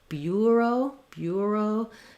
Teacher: you can also have the UR sound here more of a tense diphthong rather than just ER